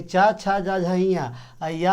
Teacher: चा वर्ग यानी चा छा जा झइया या और ये सा, इसका उच्चारण होता है तालु से।